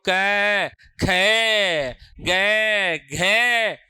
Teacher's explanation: तो दूसरे और चौथे को बोलने में हवा ज्यादा टकराती है।